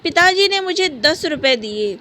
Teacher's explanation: जोर डाला हमने मुझे शब्द पे, तो यहाँ क्या बल दे रहे हैं, प्रेशर कर रहे हैं मुझे पे, कि मुझे दिए हैं, किसी और को नहीं दिए हैं।